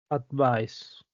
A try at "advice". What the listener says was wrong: All right, that was better. Good job.